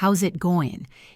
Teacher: The sn is becomes a z sound. The t in it might disappear or become a stop.